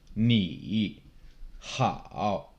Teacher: Third tone, it starts low, it drops and kind of bottoms out in your voice and then comes back up.